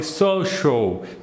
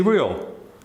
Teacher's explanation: the second syllable is the syllable AL, that many people will pronounce ow, but it should be pronounced all, very closed.